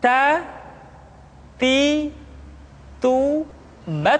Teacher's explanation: huruf t ketika diucapkan terdengar ada nafas yang mengalir